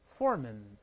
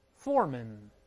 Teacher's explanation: 完全一样，后面都是轻读